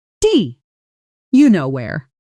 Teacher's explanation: Take the phrase, "Do you know where?" When spoken quickly and casually, this often blends into something like d you know where the do you almost collapsing into a single soft sound